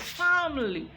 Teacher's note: there is family but it is not family it is family there is a weak syllable that has been deleted